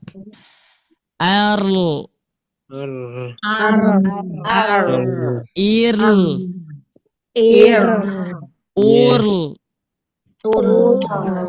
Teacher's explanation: Kalau sifat dari inhirafnya seperti tadi coba kita rasakan huruf ro ketika sukun. Jadi ketika diucapkan itu si ujung lidah ditarik ke belakang ya